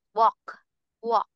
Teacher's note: Wait, no L, no L sound.